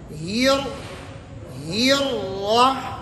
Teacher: تو آپ دیکھیں بسم اللہ، ملا، لا، لے نہیں کرنے، لا، ہیر، راہ، یہ ہا کے زیر کو جب را کے ساتھ ملائیں گے، ہا کے زیر کو نیچے کی طرف لے جائیں گے زیر کو، اور جب را کے ساتھ ملیں گے تو را کو اٹھا لیں گے اوپر، را کو موٹی پڑیں گے